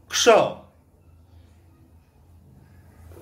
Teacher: क है बट बाद वाला जो अक्षर है वो है श यानी कि मूर्धन्य वाला श. वो जो श, श और स है वो बीच वाला जो श वो है मूर्धन्य श, जिसे हम षटकोण का श भी कहते हैं आम भाषा में.